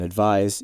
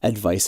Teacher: the S gives it the sort of Z sound, the voiced sound, and the C has the unvoiced sound